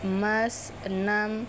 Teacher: yaitu vokal tengah, bibir tidak bulat, mulut terbuka